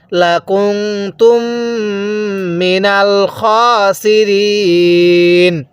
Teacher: দুই ঠোঁট চাপ দিয়ে ধরলে এটা নাক দিয়ে অবশ্যই গুন্নাহ হবে।